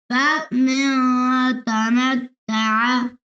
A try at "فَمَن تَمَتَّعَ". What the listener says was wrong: فمن नहीं, मन है, मन। फमन और इख्फा करना है। फमन